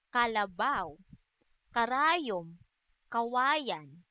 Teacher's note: Letrang K naman ay walang tunog na isinasaad sa paraan ng pasara at sa punto ng pangalangala.